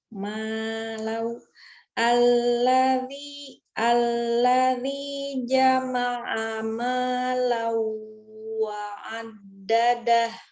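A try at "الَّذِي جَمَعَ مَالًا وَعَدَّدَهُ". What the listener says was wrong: Jangan berubah ya nadanya. Alladzi jama'a malau wa addadah.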